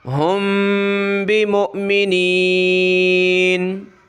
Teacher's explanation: میم ساکن ہے، اس پہ اخفا کیا جاتا ہے، ناک میں آواز چھپائی جاتی ہے